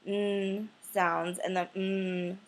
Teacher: we're forcing air out through our noses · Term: nasals